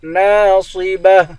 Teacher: صاد کو موٹا پڑھیں گے، آخر میں گولتا ہے، گولتا پر جب وقف کرتے ہیں گولتا ہا بن جاتی ہے.